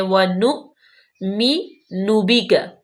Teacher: حمزہ ساکن آ گیا ہے تو اس پہ ہم جھٹکا پیدا کریں گے